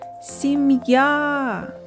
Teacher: наголос падає на звук а